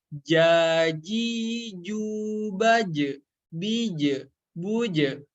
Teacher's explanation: Huruf jim tengah lidah kita menempel ke tengah langit-langit, kurang lebih seperti huruf J pada ejaan bahasa Indonesia ya